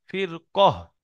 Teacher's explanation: ফির কহ র সাকিনের ডানদিকে জের, র বারিক হওয়ার কথা ছিল। কিন্তু পরে হরুফে মুস্তালিয়া সাতটি অক্ষরের মধ্যে কফ আসার কারণে র টাকে বারিক না করে পুর করে পড়তে হবে।